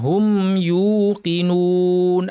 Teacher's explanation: হুম বলার সময় মিমে যেন কলকলা না হয়